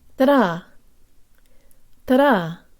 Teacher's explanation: The D in this phrase is just like a flipped Russian where the tongue flicks against the roof of the mouth. As I've said before, it's strange but true that English speakers perceive this sound as a D, but Russian speakers perceive it as an R.